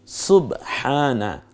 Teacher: হকে আকার দিন, আকার দেয়া হয়েছে হচ্ছে খাড়া আকার, এর মানে খাড়া জবর, হটা গলার মধ্যে চাপ দিয়ে বলুন, হক আদায় হবে। আর আকারটা খাড়া হওয়ার কারণে একালিপ টেনে বলুন হ্যাঁ।